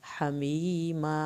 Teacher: ہا کو حلق سے پڑھیں گے، یا ساکن کو کھینچ کے ما الف پورا پڑھا جائے گا